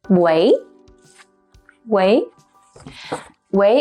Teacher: is pronounced as the second raising tone